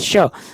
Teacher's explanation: श तालव्य व्यंजन है, इसका उच्चारण स्थान तालु है